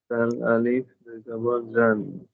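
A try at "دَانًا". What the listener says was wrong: দান এটা কিন্তু দান হবে মানে জিহ্বার আগা এটা সামনের উপরে যে দুই দাঁত আছে ওইটার ওইখানে যদি না যায় তাহলে এটা কিন্তু প্রপার উচ্চারণ হবে না এটা খেয়াল রাখা লাগবে দাল আলিফ দুই জবর দান দান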